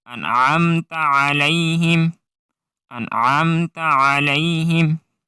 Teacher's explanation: In أنعمت, it is not أنعمت. You should not produce a jerk sound on noon. It's only noon sakin.